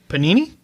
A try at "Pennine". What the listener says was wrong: No, it's not Panini. There's one less syllable.